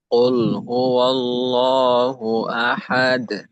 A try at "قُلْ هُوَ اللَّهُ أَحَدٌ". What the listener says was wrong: এটা কুল যেন কিছুটা কোল একটু ওকারের মতো না শোনায়। আপনার ক্ষেত্রে কিছুটা একটু ওকার মুখী হয়ে